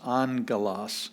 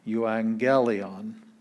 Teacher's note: We have two gammas. The first one sounds like an N, and the second one is the G sound.